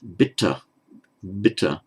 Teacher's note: The breath is not flowing while you're saying the b, and it's not actually flowing when you're saying the t. That's why they're called the stops.